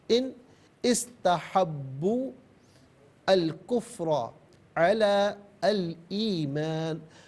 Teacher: ان استحبوا الکفر علی الایمان، ملا کر پڑھنے کی صورت میں ان میں جو نون ہے ناظرین، اس کے نیچے زیر کو استحب کے سین کے ساتھ ملائیں گے، درمیان سے الف یعنی حمزہ کو حذف کیا جائے گا۔